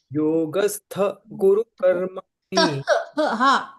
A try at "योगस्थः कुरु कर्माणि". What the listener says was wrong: एवं न योगस्थः कुरु कर्माणि अर्ध हकार